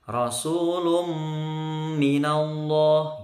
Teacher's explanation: tanwin ketemu mim maka disebut Idgham Bighunnah ya masuk ke huruf setelahnya